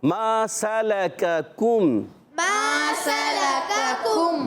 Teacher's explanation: پہلے والے کاف پر زبر ہے, ہونٹ گول نہیں کریں گے, مگر اگلے والے کاف پر پیش آنے کی وجہ سے ہونٹ گول ہو جائیں گے